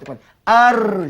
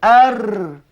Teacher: Ujung lidah tu, mula dia diangkat ke gusi. Lepas tu dia terus dia cenderung lari pula ke belakang sedikit. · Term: ra